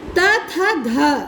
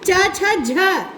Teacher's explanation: संस्कृत से पाली में आकर त वर्ग की ध्वनि च वर्ग में परिवर्तित हुई है। तो ध है वो च वर्ग का है, वो च वर्ग में परिवर्तित हुआ।